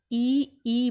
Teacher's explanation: ई बोलो जब एकदम स्पष्ट तो तालु से उच्चारण होता है।